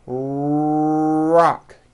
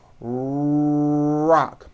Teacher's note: notice how my lips are coming forward and my tongue moves back in my mouth and I push out the r sound watch this rock do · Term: American R